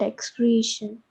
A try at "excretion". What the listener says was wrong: Excretion, not excreation. See, when you are pronouncing it as excretion, A should be there, isn't it? Is there any A is there in the spelling? Excretion. Excretion. Excretion. Creation. Don't pronounce it as creation. A is not present.